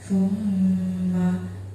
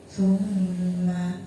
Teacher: Di situ ada mim yang bertasdid, maka cara bacanya dengung.